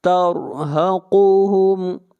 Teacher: را کو موٹا پڑھیں گے، را سے پہلے زبر ہے، اور قاف کو موٹا پڑھیں گے، قاف حروف مستعلیہ میں سے ہے۔